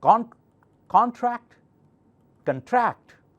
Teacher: So it's a verb, so tract, the second syllable is louder. Contract, contract.